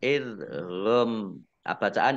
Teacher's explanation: Mim sukun bertemu dengan huruf wawu bacaan idhar safawi. Idhar safawi dibaca jelas.